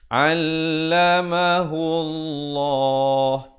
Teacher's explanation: Lafzul jalalah datang sebelumnya dhammah, dibaca tebal.